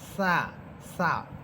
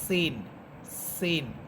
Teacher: মাখরাজগত পার্থক্য হচ্ছে সা জিহ্বার আগা সামনের উপরের দুই দাঁতের আগার সাথে লাগবে, আর সিন নিচের দুই দাঁতের আগার সাথে লাগবে। সিন সিন। আর সা উপরের দুই দাঁতের আগার সাথে লাগবে।